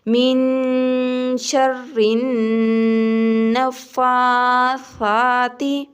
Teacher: نون کے اوپر شد ہے، نون پر گنہ کرنا ہے۔ فا اور سا کو ایک الف کے برابر لمبا کرنا ہے۔ سا کے اوپر کھڑی زبر ہے، ایک الف کے برابر لمبا کریں گے، اور سا نرم حروف ہے۔ · سا کے اوپر کھڑی زبر ہے، ایک الف کے برابر لمبا کریں گے، اور سا نرم حروف ہے۔ اس کو جب زبان کی نوک کو دونوں دانتوں کے درمیان رکھیں گے تو پھر اچھے طریقے سے سا ہمارا ادا ہوگا